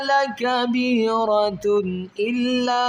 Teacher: دو پیش کی تنوین پر غنہ نہیں کریں گے بلکہ اظہار کریں گے